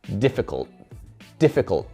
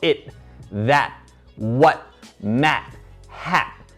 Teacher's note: lo pronunciamos como algo que se llama el glottal stop, que la lengua llega a ese punto de la T, difficult, pero ahí para y no lo soltamos, no pronunciamos ese sonido.